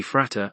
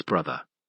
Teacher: you will find that we have some sort of fricative in the classical languages and a bilabial plosive in English, and also in the other Germanic languages. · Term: Grimm's law